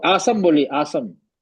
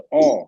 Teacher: औ बोलने के लिए आपको जबान की जड़ उठाना पड़ता है